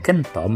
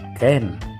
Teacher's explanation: kata kentom berubah menjadi kata ken dengan penghilangan bunyi OM di akhir kata